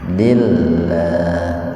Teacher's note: Di lafdzul jalalah, lafad Allah itu sering disebut lafdzul jalalah, didahului oleh kasrah. Jadi lafad Allahnya dibaca tipis. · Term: tarkik